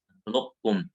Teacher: idgham naqis, yang qaf dulu, nakhluq, ada isti'lanya baru kaf, nakhluqum